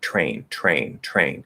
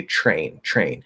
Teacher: Other natives, such as myself, will actually, in the presence of that R, the R consonant, will change that T into a CH